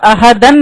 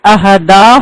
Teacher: 2 زبر کو جب ہم روکیں گے تو احدن نہیں پڑھیں گے، احدن سے احدا ہو جائے گا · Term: 2 زبر کو جب وقف